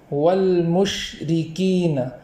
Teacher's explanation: اس کو اس طریقے سے پڑھیں گے کہ شین اور را جدا جدا ادا ہو، جیسے والمشرکین، اس طریقے سے پڑھیں گے۔